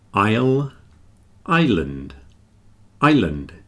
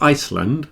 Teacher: the key is don't pronounce the S